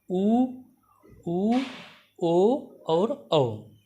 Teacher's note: जिन स्वरों का उच्चारण करने में जीभ का पिछला भाग कार्य करे उसे पश्च स्वर कहते हैं